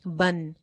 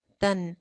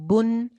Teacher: तनवीन की जो आवाज है उसके अंदर अगर आप गौर करें तो एक नून की आवाज आती है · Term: छुपा हुआ नून